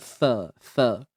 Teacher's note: Untuk sa ni ada dua huruf sa ni, kita kena keluarkan hujung lidah kita. Sikit je.